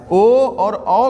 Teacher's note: ओ और औ का उच्चारण स्थान कंठ और ओष्ठ से मिलकर होता है।